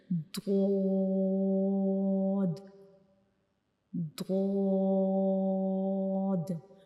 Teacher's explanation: زبان کے کنارے جو ہیں وہ ہمارے اوپر کی داڑوں کی جو جڑیں ہیں، اوپر والی جو داڑیں ہوتی ہیں ان کی جڑوں کو ٹچ کریں گے ہماری زبان کے کنارے۔ تو یہ دود کا مخرج ہے، ہم دود کو اس طرح پڑھتے ہیں جیسے کہ دود دود۔ · ایک تو ہماری زبان اوپر والے جو سامنے والے دانت ہیں ان کے اندر والی سائڈ پہ جو مسوڑیں ان کو ٹچ کرے گی، دوسرا جو زبان کے کنارے ہیں وہ اوپر والی داڑیں جو ہیں، ہماری اوپر کی داڑیں جو ہیں ان کی جڑوں کو ٹچ کرے گی۔